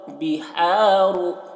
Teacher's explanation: हा को हलक से अदा कर रहे हैं और रॉ को पुर पढ़ रहे हैं